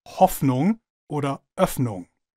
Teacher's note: Beide Vokale werden im Hochdeutschen offen ausgesprochen, sobald sie kurz ausgesprochen werden